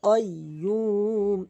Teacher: কফ জিব্বার গোড়া উপরে তালু থেকে, কাইয়্যুম, এবং ইয়া ওয়াও দিয়ে ১ আলিফ টানবেন, অক্ফ করলে ৩ আলিফ টানবেন।